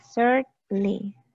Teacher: No se pronuncia la N ni la A.